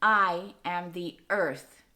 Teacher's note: Okay, so we have stressed, unstressed, stressed.